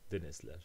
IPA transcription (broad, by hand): denizler